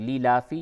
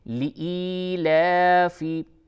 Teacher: لإیلاف قریش، اس جگہ پہ عام طور سے لیلافی بول دیتے ہیں لوگ، لیلافی، جو کہ بالکل ہی غلط ہے۔ لإیلافی، یا مدہ ہے اور لام کے اوپر کھڑا زبر ہے، ان دونوں حروف کو کھینچ کر کے پڑھیے